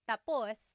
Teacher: when the emphasis is at the end, tapos, that means finished. When the emphasis is on the first syllable, then it means next.